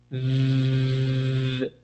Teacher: In this case, is V, right? If you touch your throat with your fingers, you're going to feel vibration with the V sound.